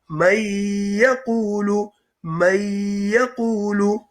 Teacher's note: Therefore, since ya is one of the 4 letters where you will do gunna, you will miss out the noon, join the mim to the ya, and say may yaqulu. You must do gunna.